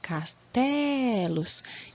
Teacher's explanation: não tem o acento, mas até pronuncio mais forte o E. Castelos. Então, a sílaba tônica é a penúltima, que vai ser também paroxítona.